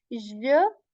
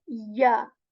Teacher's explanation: the middle portion of the tongue is raised towards the palate. We do not say j, we say ya, ya.